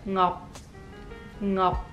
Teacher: You close your mouth at the end with a C